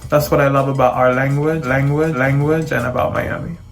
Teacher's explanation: In Miami English, you'll hear that dark L in places where you wouldn't hear it in other varieties.